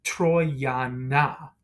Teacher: They're going to elide. So that final O in Troiano is going to disappear, and it's going to elide into the A, right? The preposition A there.